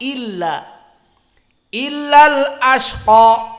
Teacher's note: Asalnya al ashqa. Hamzah di sini dinamakan hamzatul wasl, hilang di saat disambung.